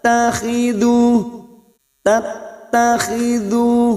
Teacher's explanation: huruf ta yang bertasdid masuk pada huruf ta berikutnya